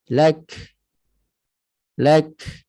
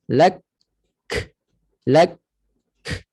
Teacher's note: Tetapi pada kaf dan ta, cara untuk meringankan tekanannya disebabkan syiddah tu lak, berat, mesti kena lepaskan sikit dengan cara hams, nafasnya terlepas. Lak, maknanya syiddah dulu baru hams.